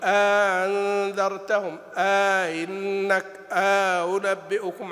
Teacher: مد الحجز الذي يكون في القراءات، أو مد الحجز أو الفصل أو الإدخال، يعني ما أقول أنذرتهم، إنك، أنبئكم، عند بعض القراء إذا سهلوا الهمزة الثانية يأتون بألف بينهما، تحجز، تحجز بينهم